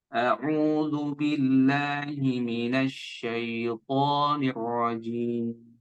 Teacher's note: Ya, ada tasydid, maka lebih tebal lagi. Huruf ra ini memang tafkhim ya, tebal.